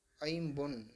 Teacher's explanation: ஐ ஒரு வார்த்தையோடு சொல்லோடு இணைந்து வரும்பொழுது உதாரணத்துக்கு ஐம்பொன் அப்படின்னு சொல்றோம். ஐம்பொன் ஐ அப்படின்றது முதல்ல வந்திருக்கு. அப்போ முதல் எழுத்து குறுக்கும். இதற்கு அரை மாத்திரை குறைந்து ஒன்றரை மாத்திரையாக ஒழிக்கும். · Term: ஐகார குறுக்கம்